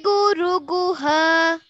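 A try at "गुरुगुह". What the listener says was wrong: You're singing Guru Guha. I'm telling Guru Guha. Guru Guha. You're refusing to come down to the Guru Gu. Guru Guha. Guru Guha. No. Guru Guha Sani Dama. Guru Guha has to come down a little.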